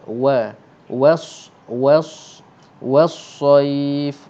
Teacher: nipiskan waw dulu baru tebalkan sad